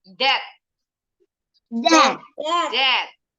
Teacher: Bunyinya T doang, B-nya silent. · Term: silent B